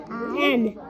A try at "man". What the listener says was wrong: Go right back over here and put your lips together. Right back. No, honey, go right back over here and put your lips together. Now, lips together. Man.